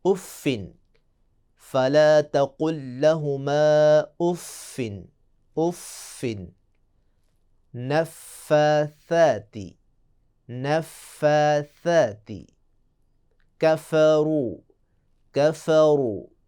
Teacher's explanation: جب بھی سامنے والے 2 دانت نیچے والے ہونٹ کے تری والے حصے سے لگے تو حرف فا ادا ہوگا۔ انشاءاللہ ہم آئندہ بحث میں بتائیں گے کہ فا میں ایک صفت پیدا ہوتی ہے، صفت نفخ، جس کا مطلب ہے کہ جب فا کو ادا کریں گے تو آواز منہ سے پھونک کر نکلے گی۔